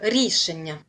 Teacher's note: А рішення наголос на першу силабу.